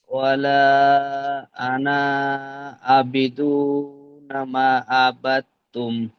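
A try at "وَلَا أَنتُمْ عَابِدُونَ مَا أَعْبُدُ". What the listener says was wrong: আচ্ছা, এখানে আপনি ওয়ালা আনা বলছেন, তো এখানে 5 নম্বর আয়াতে ওয়ালা আনা কিন্তু নেই। এখানে ওয়ালা আনতুম, হামজা নুন জবর আন, তামিম পেশ তুম, ওয়ালা আনতুম।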